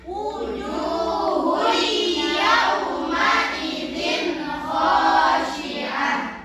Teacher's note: Idgham bi gunnah, jadi harus dimasukkan disertai dengan Dengung.